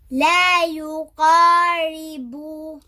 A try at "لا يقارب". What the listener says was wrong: Remember the ra is muraqaq, yeah? Light. لا يقارب when it has a kasra.